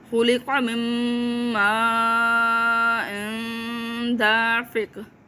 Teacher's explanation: اس لحاظ سے یہاں نون غنہ ہو جائے گا، ٹھیک ہے۔ اینڈ پہ پھر قاف قلقلہ کریں گے